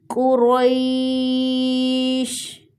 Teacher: قاف اور را دونوں کو موٹا پڑھا جائے گا۔ یا لین ہے، نرمی سے پڑھیں گے۔